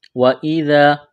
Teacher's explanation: ذال کو پڑھتے وقت زبان تھوڑی سی باہر نکالیں گے